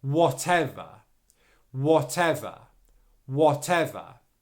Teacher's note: And then that will really affect the overall flow of the word. Okay, so make sure that you're pronouncing that V sound at the beginning of the next syllable, but that next syllable is unstressed, so your V sound isn't loud